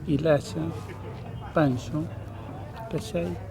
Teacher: Interesante es la fricativización de una africada.